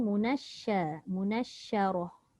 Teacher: Shin tu tetap nipis, ra sahaja dibaca dengan tafkhim